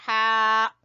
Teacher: ہا کو آپ نے گلے کے درمیان سے نکالنا ہے